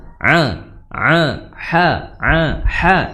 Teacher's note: ha di tengah tenggorokan ya tengah tenggorokan dikatup epiglotis